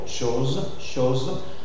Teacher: il y a la tendance à fermer la prononciation de O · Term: O fermé